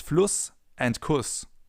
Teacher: it all comes down to the length of the vowel preceding the sharp S or the double S.